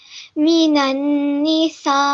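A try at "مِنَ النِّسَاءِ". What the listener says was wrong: Excellent. Well done, mashallah. Really, really good recitation.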